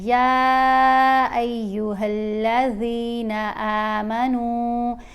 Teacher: اس آیت میں ہم نے دیکھنا ہے یا کے اوپر یہ جو مد ہے، اس مد کو ہم نے 3 الف جتنا لمبا پڑھنا ہے اور ہا کو آگے لام سے ملانا ہے، یا ایھا الذین آمنوا، نون کو بھی 3 الف جتنا لمبا پڑھیں گے۔